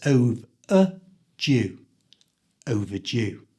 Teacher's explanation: the D is pronounced as a j sound, so it's overdue.